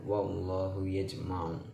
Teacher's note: Allah, lafaz berbunyi Allah seperti bunyi O apabila didahului oleh huruf yang berbaris fathah atau dhammah. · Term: tafhim